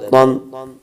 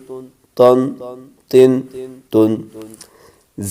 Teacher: تا کو باریک رکھنا ہے